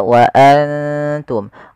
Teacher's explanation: kita samarkan nunnya kepada huruf ta dan ditahan dua harakat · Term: ikhfa